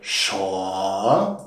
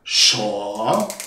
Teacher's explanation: Meine Stimme beginnt ganz tief und hebt dann an. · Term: Steigender Ton